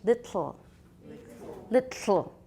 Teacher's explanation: I say little I have a tap and a schwa